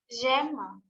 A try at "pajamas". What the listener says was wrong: Pajama. Actually, it's called pajamas. It has an S.